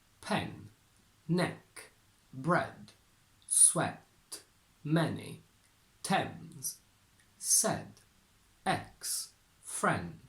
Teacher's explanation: this sound must be very short and very bright and open. We don't have a closed version of this sound as a standalone one. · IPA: /e/